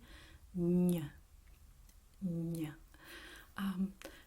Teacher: your tongue has to touch the roof of your mouth, the palate, and when you pronounce the ñ, it's kind of like you push the sound toward the nose.